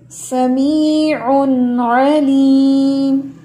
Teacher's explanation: हमने कोई इख्फा नहीं करना यहाँ पे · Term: इजहार